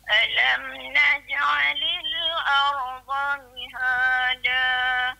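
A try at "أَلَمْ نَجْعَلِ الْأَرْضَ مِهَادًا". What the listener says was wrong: Alam naj. Dia qalqalah tu dia ada je sikit. Alam naj. Dia ringan saja. Alam naj'alil arda tu kena tebal sikit.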